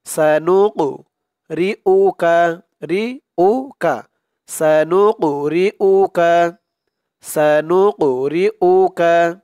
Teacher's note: নুন দিয়ে কফ ধরবে, কফটা কলকলার হরফ, ধাক্কা দিয়ে পড়তে হবে।